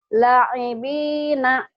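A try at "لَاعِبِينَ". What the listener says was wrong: lanya panjang, Mi. Kalau ada panjang begini, panjang. Ya, ini marsilah qasiroh. Panjang, ada yang panjang.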